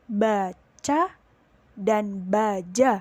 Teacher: palatal atau posisi lidah dinaikkan ke langit-langit keras